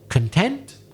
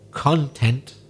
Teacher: I stress the first syllable instead of the second